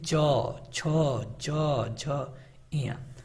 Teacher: तालव्य मतलब कि तालु से, जिनका तालु से उच्चारण हो उनको हम तालव्य कहते हैं